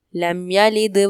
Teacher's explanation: لم یلد میں میم ساکن کا قاعدہ اظہار شفوی ہوگا اور دال میں کلکلا کریں گے.